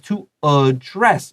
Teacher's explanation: And look at this, to address, 这 个 DD 前 面, because it's starting the word, that A is going to be a schwa. 它 没 有 被 加 强, so 这 个 母 音 是 schwa.